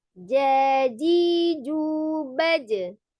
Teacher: Kebetulan jim ketika dia sukun dia dipantulkan ya, tetap harus dipantulkan.